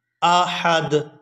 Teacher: وَلَمْ يَكُنْ لَهُ كُفُوًا أَحَدٌ، یہاں بھی احد جو لفظ آپ دیکھ رہے ہیں یہاں وقف ہو رہا ہے، آیت ختم ہو رہی ہے، تو یہاں سے بھی دال کو آخر سے ساکن کر دیں گے اور ہا کو دال کے ساتھ ملائیں گے۔